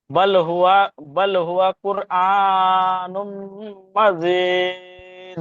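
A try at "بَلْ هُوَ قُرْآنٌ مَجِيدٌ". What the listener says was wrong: মাশাআল্লাহ, সুন্দর।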